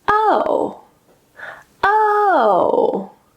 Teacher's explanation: we can use a falling intonation, and that will mean it's a statement. oh, oh, high to low.